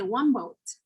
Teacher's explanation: the n sound in one will become an m which is a beloveal sound an m sound when we're pronouncing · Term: assimilation